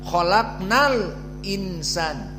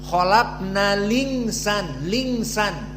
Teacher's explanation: Mana hamzahnya al-insan dihapus dan harokatnya yang kasrah dimasukkan kepada lam jadi lingsan. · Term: naql